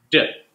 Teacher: there's going to be vibration in the vocal cords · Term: D sound